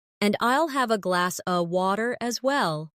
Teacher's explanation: In connected speech, glass of sounds like glass a.